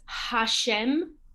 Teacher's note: the hay in the middle of a word or in the beginning of a word is vocalized